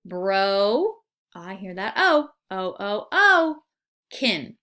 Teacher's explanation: the O in broken says its name so therefore it is a long vowel bro I hear that oh-oh-oh-oh kin so I split it after